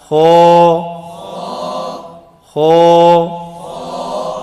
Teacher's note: جی ہونٹ گول نہیں کرنا، موٹا حرف ہے. ہو ہو. یہ طریقہ ہوتا ہے اس کو ہونٹ کو گول ہونے سے بچانے کا طریقہ، تاکہ آپ کو پتہ چلے خو ہونٹ گول ہو گیا.